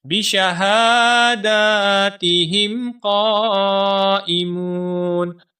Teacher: ہا کے اوپر بھی کھڑی زبر ہے دال کے اوپر بھی کھڑی زبر ہے. دونوں الفاظ کو ایک ایک الف کے برابر کھینچ کر پڑھیں گے · قاف کو ہم 4 سے 5 الف کے برابر لمبا کر کے پڑھیں گے کیونکہ قاف کے بعد الف کے اوپر بڑی مد ہے.